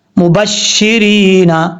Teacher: یا ساکن سے پہلے زیر ہو تو یا مدہ ہوتا ہے، یہاں پر زیر ہے یا ساکن سے پہلے، اس لیے یا مدہ ہے، ایک الف کی مقدار اس کو لمبا کر کے پڑھا جائے گا